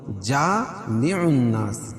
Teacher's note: जा अलिफ मद्दा मनास नून मुशद्द गुना होगा